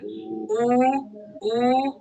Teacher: ketika kita ucapkan u u Itu otomatis pangkal lidah sudah terangkat jangan Tengah lidahnya diangkat ya kalau tengah lidahnya diangkat nanti jadinya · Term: Wau almaddiyah